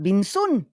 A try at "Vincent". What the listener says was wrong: You say Vincent, it's V.